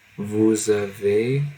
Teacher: And so since it starts with an A, which is a vowel, we have to do something called liaison, which is pronouncing the S as a Z